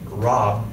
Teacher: When saying a word with a b ending, like rob, native English speakers simply close their lips at the end. By closing your lips, you are immediately shutting off the air, effectively cutting off the word. No air means no sound. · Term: soft pronunciation